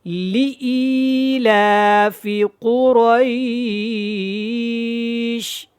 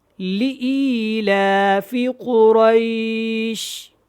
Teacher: لام زیر لی ہے، لام زیر لے نہیں ہے